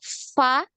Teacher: Nah, jadi tidak rapat ya, tidak rapat bibir atas sama bibir bawah itu tidak tertutup rapat, tapi ini ya giginya, gigi seri yang atas ya ujungnya, ujung gigi seri itu menempel di bagian dalam dari bibir bawah ya, bibir bawah bagian dalam. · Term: huruf fa